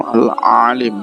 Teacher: Bacanya ain, ada suaranya di dalam rongga mulut. Huruf lamnya dibaca panjang karena setelah lam ada huruf ya yang berharokat sukun